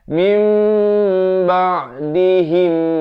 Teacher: iqlab di sini dibacakan dengan ditukarkan daripada bunyi nun kepada mim 2 harakat. Mim ba'dihim, dengungkan di sini 2 harakat, idgham mislain.